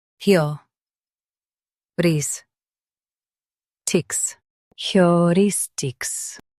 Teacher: Emphasize ris and keep heu and tics light.